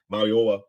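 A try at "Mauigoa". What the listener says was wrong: You didn't pronounce the G, bro. It's a G there.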